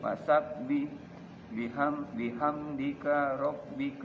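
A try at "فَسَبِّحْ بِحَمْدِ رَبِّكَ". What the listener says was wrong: K-nya di sini, Pak. Nah, ya. Bihamdika enggak ada. K-nya di sini ya. Bihamdi rabbika.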